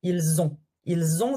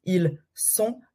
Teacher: Par contre, avec avoir, with avoir, we do la liaison, so it's Z